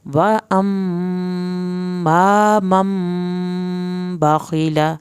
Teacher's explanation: خا کی زیر اور لام کی زبر کو لمبا نہیں کرنا